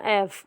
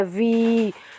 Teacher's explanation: और जो आप देखें जो यहाँ पे वी वाला साउंड है यानी 5 वी जो है वो बिज़ बुज़ साउंड है, तो वो आपके जो वी वाला साउंड है उसने आपको जो है वोकल कॉर्ड्स को वाइब्रेट किया। तो एफ़ जो है वो हालांकि बज़ साउंड नहीं है इसलिए वो वॉइसलेस है, जबकि वी जो है वो वाइब्रेट करता है आपके वोकल कॉर्ड्स को, तो इसीलिए वो होगा आपका वॉइस्ड साउंड, ठीक है, वॉइस्ड अल्फ़ाबेट होगा।